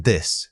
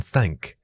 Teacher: the th sounds, the voiced sound is in this and the unvoiced sound as in thank.